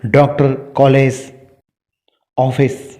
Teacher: एक आगत स्वर है जो अंग्रेजी भाषा से लिया गया है, जो आ और ओ के मध्य की ध्वनि है